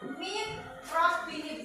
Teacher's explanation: cara bacanya dilebur sempurna tasdid pada huruf berikutnya tanpa mendengung. Ingat ya, tanpa mendengung. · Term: idgham bila guna